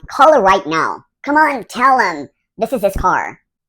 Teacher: He dropped the H sound and said for him. This happens a lot. You'll notice this with her, him, his.